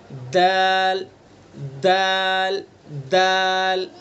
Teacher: ज़बान की नोक को सना उलिया की जड़ पर लगाएंगे तो दाल अदा हो जाएगा।